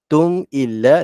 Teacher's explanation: Bermaksud mim mati ini tidak dengung. Dia baca jelas nyata.